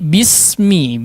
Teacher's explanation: Tapi bismi disambung ya, jangan diputus ya, meskipun ada huruf hamz di situ.